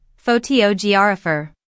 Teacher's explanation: photographer stresses the second part again